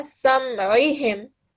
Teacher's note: try and get the ayn sound from the bottom of your throat, yeah? That's why ayn is different to alif.